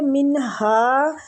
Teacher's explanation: نون کا اظہار کریں گے، ہلکی حروف ہے، آگے ہا